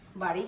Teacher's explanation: ডয় বিন্দু ড যখন উচ্চারণ করছি, বাতাসের বেগ কিন্তু কম ছিল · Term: অল্প প্রাণ ধ্বনি